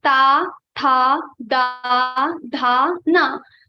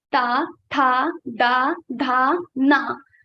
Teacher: So ta letters ta, tha, da, dha, na. Our tongue touches our teeth. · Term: ta varga